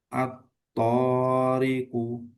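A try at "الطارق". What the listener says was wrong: Nah, panjangnya hampir lebih, tapi sedikit ya. At-Tariku. Nah, itu kalau baca tahqiq atau lambat itu pas. Tapi ketika tadwir maka itu lebih. At-Tariku kayak gitu ya. At-Tariku.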